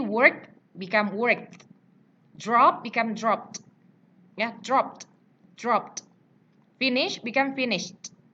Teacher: Jadi ujungnya itu adalah T. Jangan dibaca work it, drop it, finish it, watch it, itu salah. Ya, ujungnya itu harus dibaca T.